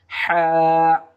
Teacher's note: হলকের মধ্যস্থান হইতে এই হা হরফটি উচ্চারিত হবে